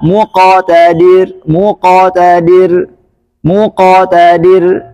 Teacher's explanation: penyebutan huruf qalqala lebih dekat ke fathah secara mutlak